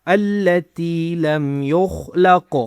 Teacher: خو کو موٹا کرنا ہے، قاف کو بھی موٹا کرنا ہے